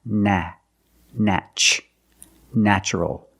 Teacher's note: The first syllable is pronounced with the short A, like black cat.